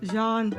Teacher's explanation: In French, the name is pronounced Jean, not like the English name Jean. It is a single syllable sound starting with a soft z, as in pleasure, followed by a sound and a clear N.